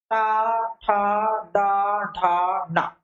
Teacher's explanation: अब हम बात करेंगे जब टा वर्ग में, तो यही जीभ आती है पीछे मुड़ रही, जैसे हम कहते हैं टा, ठा, डा, ढा, ना, अर्थात वे वर्ण जिनका उच्चारण करते समय जीभ हमारी मुड़ करके पीछे वाले छत के भाग से टकरा रही है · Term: मूर्धन्य